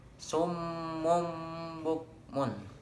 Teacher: maka bunyinya seperti akan menggantikan bunyi nun tersebut menjadi bunyi m atau bunyi mim.